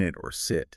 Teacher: So I is a bit more open than E, a bit more relaxed, still using the front of the tongue. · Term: I sound